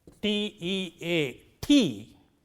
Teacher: T-E-A, tea, initial one is aspirated here, T, not T, but T.